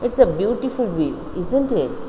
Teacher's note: It's a beautiful view, isn't it? So it's a falling intonation. It is not a real question.